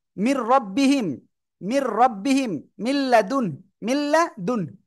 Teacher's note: ঈদগামে বেলাগুন্নার অর্থ হলো গুন্না ছাড়া মিলিয়ে পড়তে হবে।